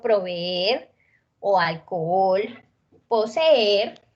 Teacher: se pueden presentar dos vocales abiertas que pueden ser idénticas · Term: hiato